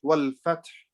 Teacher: So after we read the ta, we should have a slight sound of ha.